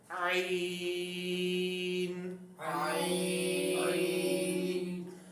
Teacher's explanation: اس بات کو سمجھیں جس طریقے سے ہم عین ساکن کو جب کسی متحرک حرف کے ساتھ ملا کے پڑھیں گے نا تو آواز آئے گی آ ای او. حلق کے درمیانے حصے کے اندر آواز جائے گی، یعنی آ ای او اس طرح نہیں ہوگا.